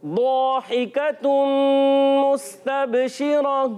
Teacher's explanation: रा को पुर अदा करेंगे क्योंकि रा पर जबर है